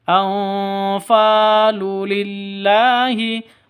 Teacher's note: Fa panjang 2 ketukan karena ada alif diawali dengan fathah mad asli